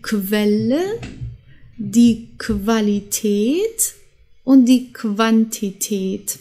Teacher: Dann haben wir QU und das wird zusammen wie KW ausgesprochen